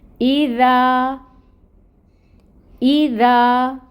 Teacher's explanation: الف ساکن سے پہلے دال کے اوپر فتح کی حرکت، الف مد کا رول، مطلب ذا کو 2 کاؤنٹس لمبا کھینچیں گے، اور اس دال کو نرمی سے بھی پڑھیں گے۔